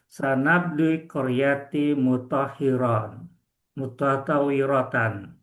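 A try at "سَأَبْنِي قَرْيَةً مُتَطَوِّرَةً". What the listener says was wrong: Masya Allah, Masya Allah, mumtaz, Masya Allah, Masya Allah.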